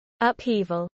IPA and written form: ʌpˈhiːvəl (upheaval)